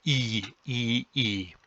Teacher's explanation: the tongue is sort of hunched up in the front of the mouth · that's not only a high vowel it's a front vowel